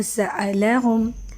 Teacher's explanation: سین کو سیٹی سے واضح کرتے ہیں